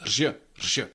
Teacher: Now sometimes it is taught as r and ž pronounced together. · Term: r with háček